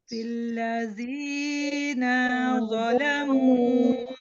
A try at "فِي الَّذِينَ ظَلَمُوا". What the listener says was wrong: अल्लज़ीना के नून को आप मद के साथ नहीं पढ़ेंगे क्योंकि ये सिर्फ जबर के साथ लिखा हुआ है। फिल्लज़ीना ज़लमू फिल्लज़ीना ज़लमू